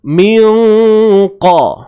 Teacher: Kadarnya 2 harakat. Jadi dengung yang berlaku tu nanti perlulah ditebalkan juga. Sebabnya apa? Sebab qaf ni tebal. Okey, dan dalam tempoh kita dengung tu, kita bersedia untuk sebut huruf qaf.